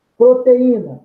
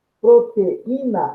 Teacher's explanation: eu tenho, nesse encontro vocálico proteína, uma pausa, uma interrupção, logo eu tenho um hiato, cuja segunda sílaba desse ato é um I tônico isolado.